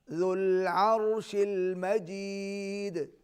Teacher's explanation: ذال کو نرمی سے ادا کیجیے, عین کو حلق سے ادا کریں گے, اور عرش المجید دال پر قلقلہ ہوگا